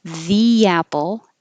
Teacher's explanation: invisible Y is going to happen because your tongue is going from a high position, the, yeah, and sliding down and making apple.